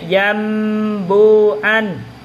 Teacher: nun sukunnya atau tanwinnya dirubah menjadi mim, disertai dengan gunah dan disamarkan. Contohnya yambuan, yam itu ya, nun sukunnya berubah jadi mim. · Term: iqlab, iklab